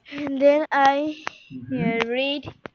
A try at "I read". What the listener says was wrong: রিড হবে না পড়েছিলাম দেখেছো ভুল হচ্ছে আই রেড হবে আই রেড রিড মানে পড়া রেড মানে পড়েছিলাম বাবা উচ্চারণটা বানান এক হলেও উচ্চারণটা ডিফারেন্ট হবে আচ্ছা, তারপর বলো বলো।